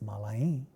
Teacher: So, mala becomes malae, a being nasalized as the plural marker